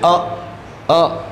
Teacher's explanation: number 3 आता है उदासीन का अर्थ होता है ओंठों की आकृति जैसे हैं उदासीन ही रहते हैं, कोई हलचल नहीं होती